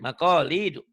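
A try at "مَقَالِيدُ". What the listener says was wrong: Do-nya jangan do, jangan.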